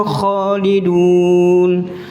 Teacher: Juga pelafatan huruf kha itu harus ngorok, Bu.